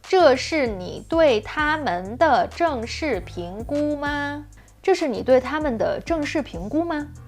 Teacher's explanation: Yet again, this is a common problem, especially with the preposition 对. So here, the preposition 对 is not the stress of the sentence, yet the way he says it really hits you in the ear.